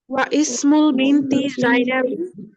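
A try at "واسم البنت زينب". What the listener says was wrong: এবার কিন্তু ওয়া ইসমু না, এই হামজাতুল ওয়াসলের কারণে মিলিয়ে উচ্চারণ করতে হবে ওয়াসমুল। এই হামজাটার উচ্চারণটা থাকবে না। ওয়াসমুল বিনতি, এবং মেয়েটির নাম জাইনাবু, জাইনাব।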